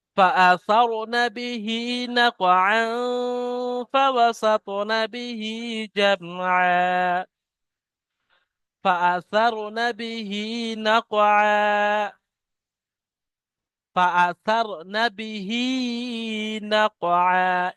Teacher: এখানে কফের উপরে সাকিন আছে, কফকে কলকলা করতে হবে। কফ ত বা জিম দাল, এই পাঁচটা অক্ষর আমরা কলকলা করতে বলি সাকিন হলে।